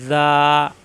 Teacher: জিব্বার আগা উপরে দাঁতের আগায় নরম করে